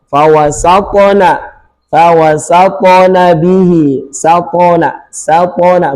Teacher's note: Misal, huruf isti'la', misal huruf isti'la' yang punya sifat qalqalah, yang punya sifat qalqalah. Contoh tho, maka yang berhubungan dengan tho ketika dia sukun, pantulannya tebal